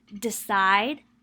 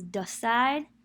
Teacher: be decide versus decide so that e is reduced to uh articulation of the vowel is shifted from high front to mid central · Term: vowel reduction